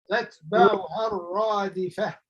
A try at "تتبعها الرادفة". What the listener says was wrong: دال not ضاد. الرادفة.